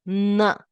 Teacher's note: For n, the tongue has to touch the teeth.